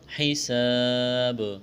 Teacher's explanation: حساب یہاں الف مدہ ہے، الف سے پہلے زبر ہے، الف کے برابر کھینچنا ہے، جب وقف کریں گے اس آیت پر تو با کو ساکن کریں گے، با پر قلقلہ کریں گے۔